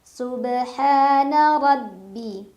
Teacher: ra dibaca secara tafkhim karena ra berbaris fathah, jadi bacanya tebal. Tebal itu pangkal lidah kita terangkat.